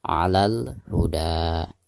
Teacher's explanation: Ketika diwakofkan maka bacaan da di sini dihukumi mad tabi'i dan dibacanya 2 harakat. Tetapi jika diwasolkan ke bacaan berikutnya maka dihukumi mad jaiz munfasil karena ada mad tabi'i lalu berhadapan dengan hamzah di lain kalimat antara kalimat huda dan kalimat au amaro ya.